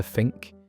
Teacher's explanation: The th became F or V, so think turned into fink